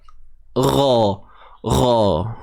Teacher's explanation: huruf ghain sekali lagi kita jumpa angkat pangkal lidah kita, gha, sifat isti'la.